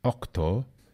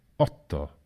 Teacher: consonant clusters such as ct in latin octo were simplified becoming for example otto in standard italian